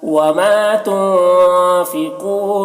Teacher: نون ساکن کے بعد فا ہے حروف اخفا میں سے، نون میں اخفا کریں گے